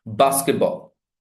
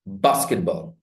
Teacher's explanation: first lexical word has stress. That stress, that syllable gets prominence.